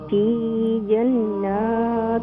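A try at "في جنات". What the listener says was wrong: کم نہ کریں. فی جنات بیکاز نون مشدد ہے.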